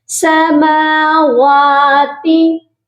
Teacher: اس word میں بہت سے لوگ مسٹیک کرتے ہیں سماواتی، تو واو کے اوپر بھی کھڑی زبر ہے اور میم کے اوپر بھی کھڑی زبر ہے۔ کھڑی زبر کی جو حرکات ہیں ان کو ہم لمبا کر کے پڑھتے ہیں ایک الف کی مقدار، تو یہاں میم کو بھی ہم نے لمبا کرنا ہے اور واو کو بھی لمبا کر کے پڑھنا ہے، سماواتی، اوکے۔